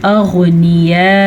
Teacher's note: गैन को पूर पढ़ना है, बेशक गैन साकिन है तब भी गैन पूर पढ़ी जाएगी